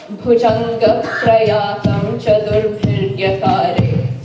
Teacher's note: And if you look at the phrase where they say this, Bhujanga Prayatam Chaturbhiryakare, that's actually short, long, long, short, long, long, short, long, long, short, long, long